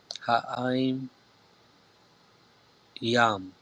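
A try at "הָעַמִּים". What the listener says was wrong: Perfect, right?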